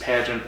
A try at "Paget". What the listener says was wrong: Paget. Paget. There's no N. Paget.